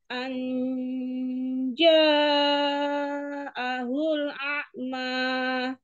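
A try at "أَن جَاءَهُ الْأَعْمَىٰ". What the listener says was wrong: Tapi coba maknya jangan kepanjangan. Anja'ahul a'ma. Segitu aja.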